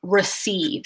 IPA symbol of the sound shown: ə